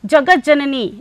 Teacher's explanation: तवर्ग के बाद चवर्ग का जा होने के कारण यहां पर उसी वर्ग का, चवर्ग का जा, ता जो है वो जा में परिवर्तित हो जाता है। इसीलिए यहाँ पर आपको आधा शुद्ध व्यंजन आधा जा दिखाई दे रहा है। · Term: श्चुत्व संधि